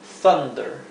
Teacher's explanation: Cuando tenemos la U seguida de dos consonantes o una consonante doble, la U va a adquirir el sonido A, que aquí lo representé con una A y una E, porque es un sonido intermedio a esas dos vocales